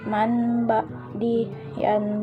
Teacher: membacanya huruf pertama yang berupa non mati atau tanwin diganti atau ditukar menjadi suara mim karena bertemu dengan huruf ba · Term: iqlab